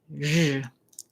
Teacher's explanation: I like to think of this sound as what I would call a voiced SH sound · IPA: /ʒ/